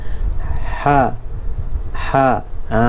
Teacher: Menekan suara di tengah halqum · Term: ha pedas